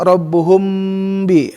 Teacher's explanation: mim bertemu sama ba ya, itu ikhfa safawi. Jadi ada samar-samar berdengung di bibir, jadi tahan bibirnya dengan 3 ketukan.